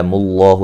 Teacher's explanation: لفظ اللہ کو موٹا ادا کریں گے، اس سے پہلے پیش ہے